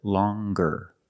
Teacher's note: With the nasal sound plus the hard G.